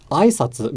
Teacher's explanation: aisatsu has the accent on the first mora. So if I said aisatsu, greetings, as a question, it would be aisatsu. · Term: atamadaka pattern